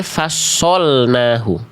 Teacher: huruf-huruf yang tebal itu ketika dia berharokat baris atas atau fathah, bunyi vokalnya terdengar seperti vokal O. Nah, vokal O yang dihasilkan dari huruf tebal atau vokal yang seperti vokal O yang dihasilkan pada huruf tebal itu bukan karena kita seperti ini memonyongkan mulut. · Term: tafkhim